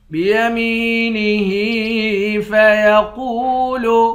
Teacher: ہا کے نیچے کھڑی زیر ہے، کھڑی زیر کو بھی ایک الف کی مقدار کھینچ کر پڑھتے ہیں۔ قاف کو موٹا پڑھیں گے، واو کے ساتھ ملا کر ایک الف کی مقدار کھینچیں گے، واو حروف مدہ ہے۔